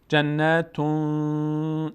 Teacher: جنتون تنوین بعدش حرف تا آمده اخفا میشه. جنتون صدا میره در بینی، مقداری نگه میداریم.